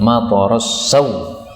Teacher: kalau berhenti maka boleh dibaca dengan menghilangkan hamzah